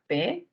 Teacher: la p es una consonante bilabial oclusiva sorda